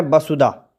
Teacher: ਜਿਹੜਾ ਔਂਕੜ ਹੈ ਇਹਦਾ ਪੋਲਾ ਜਿਹਾ ਉਚਾਰਨ ਇਸ਼ਾਰੇ ਮਾਤਰ ਕਰਨਾ ਹੈ, ਬਸੁਦਾ। ਇਸ ਤਰ੍ਹਾਂ ਦੇ ਨਾਲ ਇਹਨੂੰ ਪੜ੍ਹਨਾ ਹੈ।